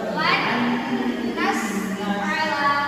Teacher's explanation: cara membacanya lan ditahan di dengung